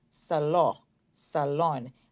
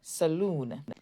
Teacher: Notice the vowel O in salon say O, salon, salon. And in saloon, the double O says oo, saloon.